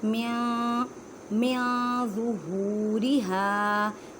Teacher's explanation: ضوا کو ادا کرتے وقت خیال رکھیں کہ زا کی آواز نہ آئے کیونکہ یہ ضوا حروف مستعلیہ یعنی موٹے حروف میں سے ہے